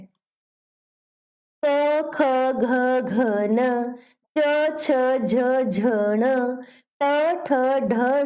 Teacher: इनको बोलते समय हवा हमारे मुंह से रुक रुक कर बाहर आती है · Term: व्यंजन